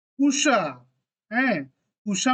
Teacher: बंगाली में जो ह्रस्व और दीर्घ ऊ होता है वह दोनों का प्रोनाउंसिएशन ऑलमोस्ट सेम होता है